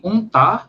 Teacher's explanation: É o U que sai tanto pela boca quanto pelo nariz.